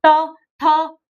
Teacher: दांतों से उच्चारण होता है। उसको बोलते हैं हम दंत।